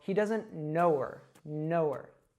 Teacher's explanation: I dropped the H sound and I connected that W from no to her